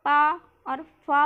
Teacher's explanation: पा और फा वो जब बोल रहे हैं तो किससे आवाज़ आ रही है? होठ टकरा रहे हैं तो दंत्य ध्वनि नहीं होगी।